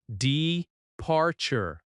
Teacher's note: Departure. Stress on the second syllable.